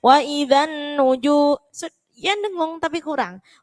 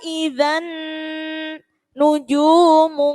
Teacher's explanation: jadi dengung lamanya itu berapa satu setengah Alif atau tiga harokat atau tiga ketukan